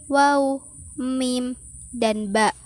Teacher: bunyi yang keluar lewat bibir atas dan bibir bawah secara bersamaan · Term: Konsonan labial